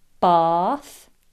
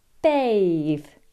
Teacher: Bath, the noun, has a long vowel sound, whereas bathe, the verb, uses a diphthong, a, bath, bathe.